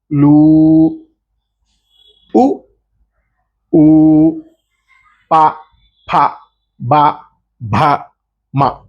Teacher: అలాగే ఓష్టియములు అంటే పెదవులు ఈ పెదవులు పెదవుల నుంచి పుట్టినవి